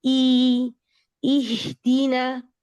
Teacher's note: اب جو حمزہ آپ پڑھیں شروع میں, اس کی جو زیر ہے اس کو ڈبل ای کا ساؤنڈ دیں